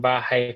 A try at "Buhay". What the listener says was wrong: Buhay, not bahay. Bahay is house.